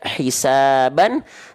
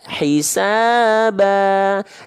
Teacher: Dibacanya menjadi harokat A-nya, N-nya hilang, dibaca menjadi 2 harokat. Hisaba. Jadi bukan dibaca hisaban lagi, tapi hisaba.